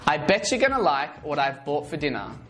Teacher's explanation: the T in what becomes a flat T sound which sounds like a d as it is surrounded by two vowels